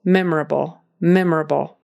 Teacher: the syllable stress is on that first syllable